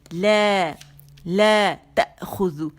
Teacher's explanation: لا تأخذ، یہاں جھٹکا دیں گے حمزہ ساکن، تا باریک